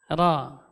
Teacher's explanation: Jadi getarannya tidak boleh lebih dari 2 getaran. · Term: huruf ra